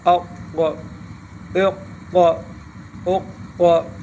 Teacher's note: اق اق اق اق سختی کے ساتھ حرف کو پکڑنا ہے. اق اق اق قلقلہ بھی کرنا ہے اور حرف موٹا بھی کرنا ہے